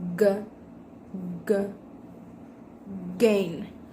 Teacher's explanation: With manner of articulation, stop, and place of articulation, velar.